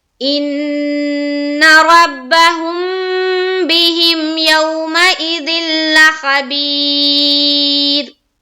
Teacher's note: तो पहले वाले हर्फ को देखेंगे क्या है, वो भी साकिन, और उससे पहले वाले हर्फ क्या है, बा है, बा के नीचे कसर है, तो यहाँ पर हम रा को बारीक करेंगे।